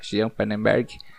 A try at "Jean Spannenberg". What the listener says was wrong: Não, é Jean Spannenberg. É porque eu olhei no Instagram dele e tem o S na frente do Pannenberg. É Spannenberg, é tudo junto.